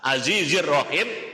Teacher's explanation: Azizir Rahim itu ada alif lam tapi tidak kebaca. Itu namanya alif lam syamsiyah.